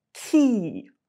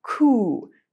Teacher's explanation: With key, your tongue is hitting the roof of your mouth a little bit further forward on your hard palate. And with coo, it is hitting a little bit further back.